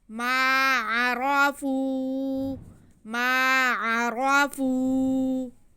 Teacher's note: را پہ زبر ہے، را موٹا پڑا جائے گا۔